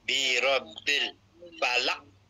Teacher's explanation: qalqalah tu dia beratkan sikit falaq